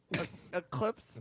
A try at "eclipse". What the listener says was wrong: Are you saying a clips? Is that what you're saying? Just one?